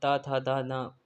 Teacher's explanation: त वर्ग में त थ द न दंत से आता है।